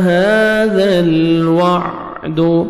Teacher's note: مَتَى هَذَا الْوَعْدُ، ہا گمر بھی کھڑے زبر ہے، 1 سیکنڈ آپ نے ہا کو بھی کھینچنا ہے، ذال کو نرمی سے ادا کر کے لام کے ساتھ ملانا ہے اور لام کو آپ نے ہلانا نہیں ہے